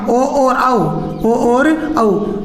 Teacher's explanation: इसके बाद में ओदतो कंठोष्टम, ओ और औ, ओ और औ, इनका क्या हो जाएगा, कंठ और ओष्ठ